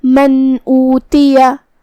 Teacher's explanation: حمزہ کی ادائیگی حلق کے نیچے والے حصے سے ہے. آخری میں یا پہ زبر ہے لہذا اس کا دھیان رہے ہم زبر کو ظاہر کریں گے. · ہم یہاں نون ظاہر کریں گے اور بغیر غنہ سے یہ حکم کو ادا کریں گے · کلمت اوتیا میں الف پہ پیش ہے تو ہمیں حمزہ کو ظاہر کرنا ہے. حمزہ کی ادائیگی حلق کے نیچے والے حصے سے ہے. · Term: اظہار